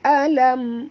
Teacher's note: Alam mim mati bertemu tak boleh dengung, izhar syafawi, bacaannya terang jelas tanpa dengung.